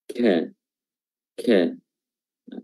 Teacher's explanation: huruf kaf memiliki sifat syiddah, tertahannya suara, namun dalam waktu bersamaan dia juga memiliki sifat hams, mengalirnya udara. Ya, jadi ketika suaranya dia berharakat fathah misalnya, dia keluar, kita barengan keluar juga dengan hamsnya atau udaranya.